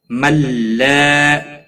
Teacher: اتبعوا واو مدہ ہے، ایک الف کے برابر کھینچ کر پڑھیں گے۔ ملا الف مدہ ہے، ایک الف کے برابر کھینچ کر پڑھیں گے